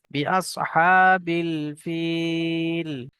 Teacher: ফা ইয়াজের ফি, ইয়া সাকিনের পূর্বে ফাই নিচে জের এসছে, ইয়া মাদ্দা একালি পরিমাণ টান দিয়ে পড়তে হবে।